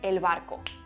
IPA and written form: el.β˕ar.ko (el barco)